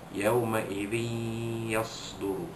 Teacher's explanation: Ayat keenam, yauma idzin tuhaddithu akhu, yauma idzin yasdurun nasu ashtatan liyuraw a'malahum, yauma idzin yasduru, dan dua bawah din bertemu dengan huruf ya, hukumnya ialah idgham ma'al gunnah, memasukkan bunyi tanwin pada dal dua bawah zin itu ke dalam huruf ya dengan dengung. Yauma idzin yasduru, dan idgham seperti ini dikenali sebagai idgham naqis, idgham yang kurang sempurna kerana ada dengung.